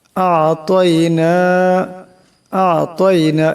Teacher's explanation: আইনের আওয়াজটা গলা থেকে চাপ দিয়ে বাইর করতে হবে।